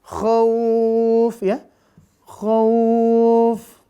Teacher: kalau lin, mat lin ini yang dipanjangkan adalah bunyi linnya. Kalau dia tidak terletak di wakaf, sebelum huruf yang diwakafkan, ya nggak usah panjang, biasa aja.